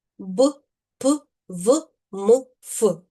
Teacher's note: В українській мові є звуки, які завжди тверді. Це губні приголосні